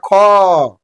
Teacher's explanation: द्वितीय और चतुर्थ वर्ण होते हैं उनको बोलने में अत्यधिक जोर देना पड़ता है यानी कि अत्यधिक हवा निकलता है समझ गए इसलिए महाप्राण बोलते हैं ज्यादा हवा निकलता है क